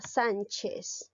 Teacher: la palabra Sánchez es una palabra grave porque la sílaba tónica recae en la penúltima sílaba